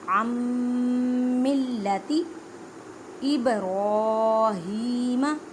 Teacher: آئین کو میم کے ساتھ ملانا ہے اور گنہ بھی کرنا ہے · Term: ادغام ما گنہ